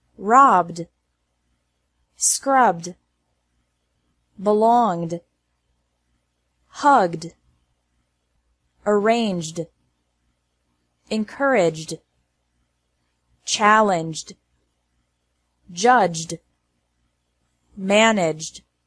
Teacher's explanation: e d is pronounced like d after verbs ending in a b g or J sound